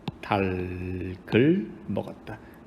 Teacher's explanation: 리을 소리와 기역 소리가 모두 다 살아나기는 하지요